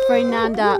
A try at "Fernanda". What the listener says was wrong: Roll your R's, Fernanda.